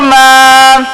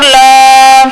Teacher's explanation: ایک الف کے برابر لمبا کر کے پڑھیں گے، جلدی سے ادا نہیں کریں گے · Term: کھڑی زبر